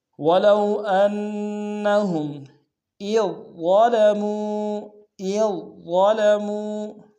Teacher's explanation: حمزہ کو ظا کے سامنے لائیں گے، ظا کو موٹا ادا کریں گے